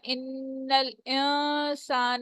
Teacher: ان نون مشدد ہے، یہاں پہ غنہ ہوگا